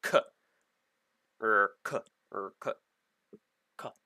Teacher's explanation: It's really close to a K or C, but there's a little bit of a U in there.